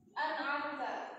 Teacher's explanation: Nunnya dibaca jelas, nggak boleh ada samar-samarnya, ada dengung-dengungnya, itu nggak boleh. Bacanya yang cepat, nggak boleh an'amta gitu, nggak boleh ditahan. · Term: idhar halqi